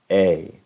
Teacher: no es un solo sonido vocal, sino es un sonido compuesto, un diptongo.